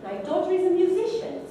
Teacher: 2 stresses, one on the first syllable of daughter and the second syllable of musician